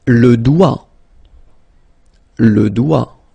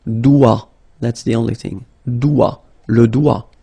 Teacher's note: don't be frightened by this G, because basically you don't pronounce it, and then the final T you don't pronounce it. So the only thing you get to pronounce is this combination of three letters, sorry, here, D, O, I, okay?